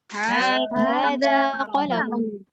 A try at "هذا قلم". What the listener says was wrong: Itu bacanya kalau pendek-pendek ya qalamun. Biasa kadang kita agak ketarik-tarik jadi qalamun, enggak qalamun gitu ya.